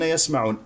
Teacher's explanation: العين يضم الشفتين فيها والعين عميقه عميقه عميقه